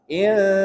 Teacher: Ikhfa hakiki. Nun sukun bertemu dengan huruf sin, maka dia didengungkan. Insa. 2 sampai 3 harokat.